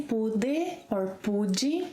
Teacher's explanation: This final 'e' sound in unstressed syllables can be pronounced as 'EE.